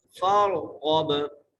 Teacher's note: गैन को भी मोटा करके पढ़ना है और गैन को बा से मिलाना है, बा पर कलकला करना है।